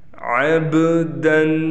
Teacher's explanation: با حروف قلقلہ میں سے ہے لہٰذا یہاں پر قلقلہ ہوگا